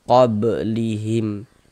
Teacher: Sedangkan ini kan kita tidak berhenti di huruf ba, tidak berhenti di sini, tidak mungkin kita berhenti di sini, salah dari segi wakaf, tidak mungkin. Dia di tengah bacaan kita, maka ini qalqalah sugro.